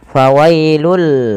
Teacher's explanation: Pada lafal bacaan fawailul lilladzina yaktubuna, pada lafal fawailul di sini tanwinnya langsung dimasukkan ke huruf lam. Fawailul, ya, awalnya fawailun, karena bertemu dengan huruf lam maka tanwinnya dimasukkan ke huruf lam dan diganti dengan huruf lam. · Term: Idgham, idgham